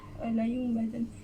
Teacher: Iqlab ni dia baca dia dengung sikit tapi la yunbadan.